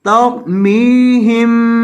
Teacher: را کو موٹا کریں گے میم کو لمبا کریں گے